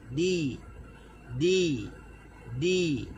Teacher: Bila kita sebut di, baru dia akan tarik. Dia pertemuan sekejap saja, letak lepas tu tarik. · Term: huruf dal